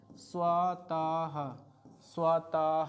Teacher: ह कहाँ से निकल रहा है, कंठ से निकल रहा है। कि अह भी कहाँ से निकल रहा है, कंठ से ही निकल रहा है, ठीक है। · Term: विसर्ग